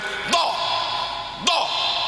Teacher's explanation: do itu aslul lisan, pangkale ilat, itu dibanting ke geraham, kiri boleh, kanan boleh. Do. Nah, sebagian imam malah neng pucuk.